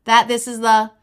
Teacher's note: there's almost no pitch change that this is the because they're all unstressed